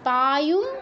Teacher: পায়ুম, অনুস্বারের পর ম আছে, তাই অনুস্বারের স্থলে ময় হসন্ত। ম যেহেতু প বর্গীয় এবং এর অনুনাসিক্য বর্ণ ম নিজেই, তাই অনুস্বারের স্থলে ময় হসন্ত উচ্চারণ হবে।